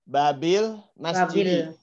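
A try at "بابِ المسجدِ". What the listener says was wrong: Ya itu dia.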